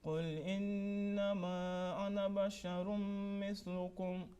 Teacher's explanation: That noon gunna, nasal sound on innama, 2 seconds. Ana has been kept short. Alif is silent there. And basharum mithlukum, assimilation with nasal sound.